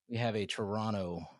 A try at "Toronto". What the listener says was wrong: You said it right the first time. Don't pronounce that last T.